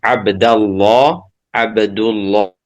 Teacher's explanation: pada prinsipnya lam ini sifatnya adalah tarqik ya tetapi untuk lafzul jalalah maka ditafhim